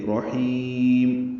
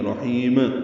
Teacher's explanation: اب اس کو لمبا کریں گے، میم میں ہونٹ بند کر لیں گے. رحیم یاد رہے میم پہ قلقلہ نہ ہو، ایک دم ہونٹ بند کر کے کھولنے نہیں ہے. رحیم یہ غلط ہے، جیسے بسملہ میں پڑھتے ہیں بسم اللہ الرحمن الرحیم، یہ غلط ہے بالکل.